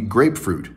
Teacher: two syllables where the weight is equal on both